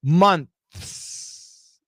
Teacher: Perfect pronunciation, we say months. You can see my TH with my tongue, months. And then you can hear my S at the end.